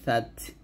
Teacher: যেমন সা তা জবর সাত, এই সা যখন উচ্চারণ করবেন জিহ্বার আগারটা উপরের দাঁতে আগে লাগাবেন আর তাকে গিয়ে ধরে হামস করবেন